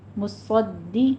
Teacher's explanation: مصدق لما، صاد دال کے اوپر تشدید ہے، صاد کو پور پڑھتے ہوئے دال کے اوپر تشدید ادا کیجیے. مصدی، آگے قوف بھی پور پڑا جائے گا.